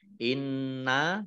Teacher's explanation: nun tasdid dibaca gunnah atau mendengung ditahan 2 harokat.